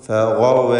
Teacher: ഗൈനിന് മാത്രം ഈ പദത്തിലും തഫ്ഖീം നൽകണം